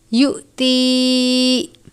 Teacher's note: یؤتی، حمزہ اور جزم ایک ساتھ ہیں، حمزہ ساکنہ ہے، جھٹکا دے کر پڑھیں گے